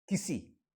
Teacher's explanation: The first E is small and the last E is long